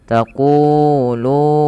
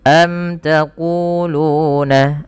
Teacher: panjang ku dan lu harus sama karena kedua-duanya mad tabi'i